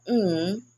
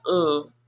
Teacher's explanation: the n is called the alveolar nasal, and the l is called the alveolar lateral